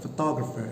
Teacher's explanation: the second syllable is given main stress